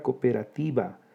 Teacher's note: Fíjense, la palabra cooperativa se pronuncia en 6 sílabas. Hay un hiato entre dos vocales iguales, la O. · La sílaba tónica es la penúltima, llana que termina en vocal, sin tilde.